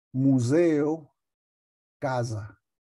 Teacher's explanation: la s tiene una vibración porque va entre dos vocales